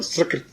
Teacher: सकृत जो है स से, दंती स से उच्चारण करो सकृत